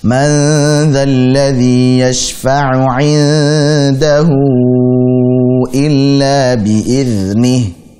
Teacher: di situ ada hak dhamir hu, illa bertemu dengan hamzah dalam dua kata, sehingga kita baca 4 atau 5 harakat, persis seperti mad jaiz munfasil. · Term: silah tawilah